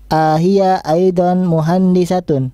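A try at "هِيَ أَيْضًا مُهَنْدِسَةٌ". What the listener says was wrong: Iya, bacaannya pendek. Ahia bukan ahia, bukan. A-nya pendek. A-nya pendek. Ahia aidon.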